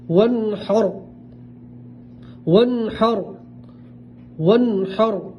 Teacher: را ساکن سے پہلے زبر ہے تو را کو پور پڑھیں گے